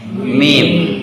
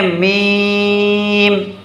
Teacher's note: میم ہمارا دونوں ہونٹوں کے خشک حصے سے ادا ہوتا ہے. یعنی جو باہر والا حصہ ہے نا، ہمارا ہونٹوں کے 2 حصے ہیں، ایک اندر والا حصہ جسے تر حصہ کہتے ہیں، ایک باہر والا ظاہری حصہ جو دکھ رہا ہے اسے خشک حصہ کہتے ہیں.